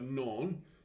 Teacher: the accent falls on the long O appearing in the word. So the O there with the mron and you'll see the accent above that.